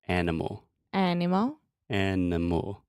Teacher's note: The schwa occurs in that unstressed middle sound.